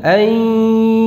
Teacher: Jadi sambil didengungkan, suaranya ada suara dengung yang keluar dari rongga hidung.